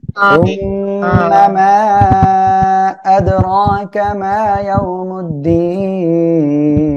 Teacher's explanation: সুম্মা এখানে ওয়াজিব গুন্না হবে, মা এখানে তিন আলিফ টান, আদ কলকলা হবে, রকা এখানে এক আলিফ টান হবে, মা এক আলিফ টান, ইয়াও নরম করে পড়তে হবে, মুদ্দিন তিন আলিফ টান হবে এখানে।